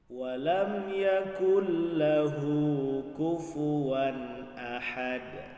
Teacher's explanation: nun sukun bertemu dengan huruf lam, maka hukum bacaannya adalah idgham bila gunnah. Jadi tidak ada dengung di situ.